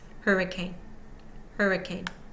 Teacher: unstressed and so is the third Parable Parable one2 over hurricane primary stress on the first syllable secondary stress on the last syllable and the middle syllable contains no stress · secondary stress on the last syllable, and the middle syllable contains no stress, unstressed.